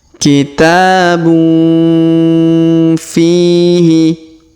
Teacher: Tanwin un bertemu dengan fi, maka huruf tanwin ya kita dengungkan dan kita samarkan.